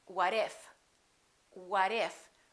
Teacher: the T between two vowels sounds like a D even when the T is at the end of the word and the next letter of the following word is a vowel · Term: fast D